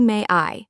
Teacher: It sounds like there is a hidden Y in the middle. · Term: linking